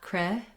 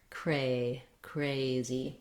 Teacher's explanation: What to watch out for in crazy is that the vowel A is a diphthong in American English. So you don't want just one sound, not cray, but cray, crazy.